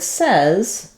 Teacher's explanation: in the word says, suddenly the vowel changes to the eh sound, like in red tent